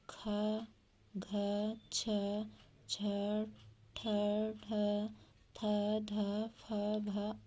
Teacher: महाप्राण। ऐसे व्यंजन जिनको बोलने में अधिक प्रयत्न करना पड़ता है और बोलते समय मुख से अधिक वायु निकलती है, उन्हें महाप्राण व्यंजन कहते हैं